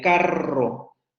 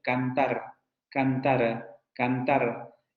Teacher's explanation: esa es una vibrante múltiple la de carro pero si pensamos en cantar esa es una vibrante simple